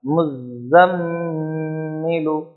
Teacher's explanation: میم پر تشدید ہے تو یہاں پر غنہ ہوگا